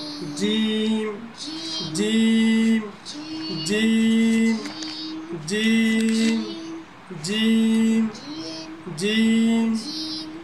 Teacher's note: তার পরবর্তী অক্ষর জিম, এটা একটু ভারী করে পড়তে হবে। জিহ্বার মাঝখানের অংশ উপরের তালুর সাথে লাগায় পড়তে হবে।